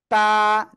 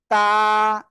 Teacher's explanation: জিহ্বার আগা সামনের উপরে দুই দাঁতের গোড়ায় লাগান, লাগান লাগান, লাগিয়ে উচ্চারণ করেন।